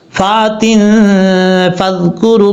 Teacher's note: کو چھوڑ دیں گے، اور تا کے نیچے دو زیر ہے، دو زیر کی تنوین کے بعد فا ہے، یہاں پہ غنہ اخفا کا غنہ ہوگا، ایک الف کی مقدار غنہ کر کے پڑھیں گے۔